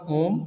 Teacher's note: अगला है प्लुत स्वर। प्लुत स्वर आपका ओम, इसे बोलने के लिए तीन मात्रा या उससे ज़्यादा का समय लगता है, इसी को हम लोग कहते हैं प्लुत स्वर।